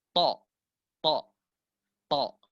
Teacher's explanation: Kemudian ro di sini huruf ro tebal 2 harokat, mat iwat, to di sini lihat, to di sini dalam kondisi tebal juga, to dalam kondisi tebal, sirata, to itu sama dengan da tempatnya, ujung lidah menyentuh pangkal gigi seri atas